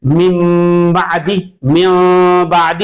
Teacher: نون کی آواز کو میم سے بدل دیا جائے گا۔ تو نون ساکن اور تنوین کے حکام میں سے ایک حکم، ایک قاعدہ با کا ہے جو کہ حرف اقلاب کہلاتا ہے، اور یہ با جب آئے گا اور با سے پہلے اگر نون ساکن اور تنوین آئے تو نون ساکن اور تنوین کی آواز کو میم سے بدل دیا جائے گا۔